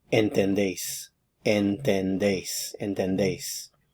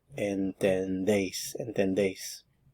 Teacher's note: No stem change, and notice that the stress is on the last syllable here.